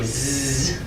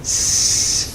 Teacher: It's just that the z has that additional voicing. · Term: voiced s